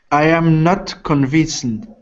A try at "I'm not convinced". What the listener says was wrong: I'm. Yeah, don't say I am because it's a contraction. So I'm not convinced.